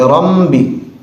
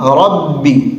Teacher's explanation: ربی میں بہت سارے خواص کو بھی سنا جاتا ہے، رم بھی بولتے ہیں، رم بھی، جو کہ سراسر غلط ہے۔ بالکل ربی، با میں ناک میں آواز بالکل نہیں جائے گی۔